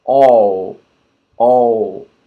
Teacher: One mistake students often make is they don't put the tongue up to finish with a L. They round the lips and it sounds like a W.